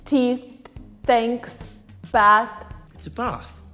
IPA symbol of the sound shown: θ